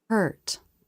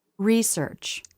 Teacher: The lips flare for both, but in this case, there was much more jaw drop for the stressed version of this vowel